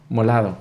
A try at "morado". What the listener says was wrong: No, morado. Lo que pasa es que a veces me cruzo mucho el Spanglish. Entonces, la R y la L se me hacen muy difíciles de pronunciar.